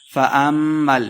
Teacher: فَأَمَّا میم شدہ ہے غنہ کر کے پڑھیں گے